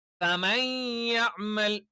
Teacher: മേലെ മുൻപല്ലിന്റെ താഴ്ഭാഗം താഴെ ചുണ്ടിന്റെ പള്ളയിൽ വെച്ചുകൊണ്ടാണ് ഫ എന്ന് ഉച്ചരിക്കുന്നത്.